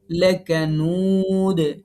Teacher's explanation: নুতে ৩ আলিফ মাদ হবে দালে যেহেতু সাকিন দিচ্ছি অক্ফ করতেছি